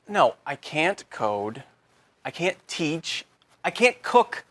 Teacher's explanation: Instead of pronouncing the T, your tongue just comes to a stop against the hard part of the roof of your mouth just behind the upper front teeth. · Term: held T